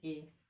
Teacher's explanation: ए हमारा जो निकलेगा वो कैसे निकलेगा, कंठ तालव्य से